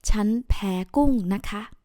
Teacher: And naka, not naka, okay? It's naka with high tone for the word ka.